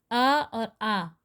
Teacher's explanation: और स्वर अ और आ कंठ से बोला जाता है।